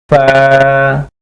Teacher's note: 14 নম্বর মাখরাজ, নিচের ঠোঁটের পেট সামনের উপরের দুই দাঁতের আগার সঙ্গে লাগাইয়া